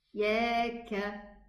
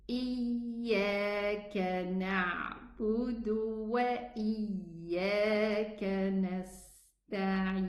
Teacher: So this can make the ya a hard letter, having almost closed articulation points, thus causing an extra sound accompanied, you know. But in fact, the ya is a soft letter. It has rakhawa, allowing the sound to flow easily.